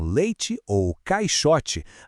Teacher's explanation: Em leite ou caixote, dá para sentir como o som desliza de uma letra para outra sem nenhuma pausa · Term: ditongo